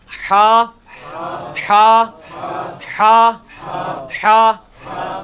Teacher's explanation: حلوائی والا جو ہا ہے, یہ وسط حلق سے یعنی حلق کے درمیان سے نکلتا ہے. یہ کبھی آپ وہ گلے والی ٹافی کھائیں نا, وہ والی آواز ایکزیکٹ بالکل کلیئر وہاں سے جو نکلتی ہے نا, یہ ہا کا مخرج وہی ہے.